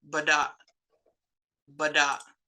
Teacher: you've got that glottal stopper at the end so it kind of like cuts the word off